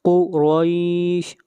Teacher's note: قاف کو موٹا پڑھیں گے، حروف مستعلیہ میں سے ہے